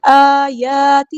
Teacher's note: الف اور یا کو برابر لمبا کرنا ہے. آیاتہ، ہاں دیکھیں یہاں پہ ٹو کاؤنٹس کو لمبا کرنا ہے.